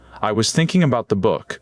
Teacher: So in the sentence, I was thinking about the book, only thinking and book truly stand out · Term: rhythm of English